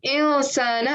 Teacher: So rather than saying insana and saying the full thing, I'm saying insana. I'm saying it like it's halfway there, like I'm hiding the noon sound a bit. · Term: hidden nasal sound